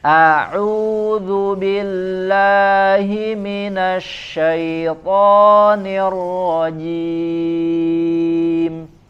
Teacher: Hamzah dan ha di sempurnakan dari pangkal tenggorokan A jadi jangan tidak pas makrojnya maka sempurnakan a ya dari